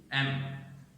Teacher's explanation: The sound M is also bilabial, M, and it is voiced.